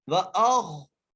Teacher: پڑھتے ہیں جی، وَأَخْرَجَتِ الْأَرْضُ، وَأَخْ، واو کے اوپر زبر ہے، حمزہ کو خا سے ملانا ہے، خا کو موٹا کر کے پڑھنا ہے